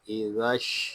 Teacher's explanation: حمزہ زیر ای، ذال شین زبر زش، ازش۔ ذال کو ہم شین کے ساتھ ملا دیں گے، یہاں الف و لام یہ نہیں پڑے جا رہے۔ شین میم زبر شم، ازش شم، میم ساکن ہے، اس میں اظہار شفوی ہوگا۔